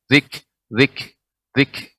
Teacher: Awalnya tertutup nih Ibu, kemudian baru ada hamasnya, sifat hamasnya.